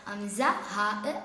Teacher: തൊണ്ടയുടെയും ഏറ്റവും അടിഭാഗത്തിൽ നിന്ന് വരുന്ന അക്ഷരങ്ങളാണ്